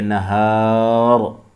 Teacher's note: رکیں گے تو پڑھیں گے نہار. را ساکن ہو جائے گی لیکن پر ہوگی، موٹی پڑھیں گے،